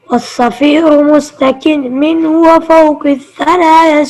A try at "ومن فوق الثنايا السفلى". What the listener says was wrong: ومن فوق, من چھوڑ گئے, من فوق الثنایا السفلی.